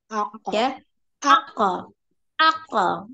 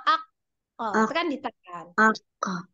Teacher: pantulannya tinggal bunyi Q tapi tanpa merubah bentuk mulut jadi jangan misalnya jangan berubah AB nah gitu aja a a